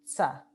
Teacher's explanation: Existía el sonido sh, la fricativa. Existía el sonido ts, que es realmente una T y una S pronunciada al mismo tiempo